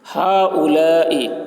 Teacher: ہاؤلائی اس میں حرف مد الف ہے، حرف مد کے بعد حمزہ اسی کلمہ میں ہے، ہاؤلائی حمزہ اسی کلمہ میں ہے، اس لیے مد متصل ہوا، اس لیے مد متصل ہوا۔ مد متصل کو 3 یا 4 الف کے برابر کھینچ کر پڑھیں گے